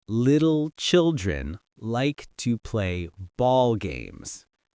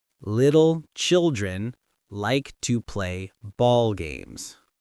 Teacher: Your mouth switches between light L and dark L automatically.